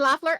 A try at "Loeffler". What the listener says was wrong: Loeffler. It sounds like it's got the O, but it's Loeffler.